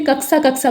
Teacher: जब वो क्ष बोलते हैं तो उसमें वो हल्का सा स का उच्चारण करते हैं और क का उच्चारण करते हैं, तो इसीलिए कक्सा कक्सा बोलते हैं।